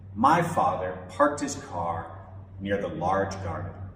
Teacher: Did you notice how AR in many of these words sounds like a deep ah sound? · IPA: /ɑː/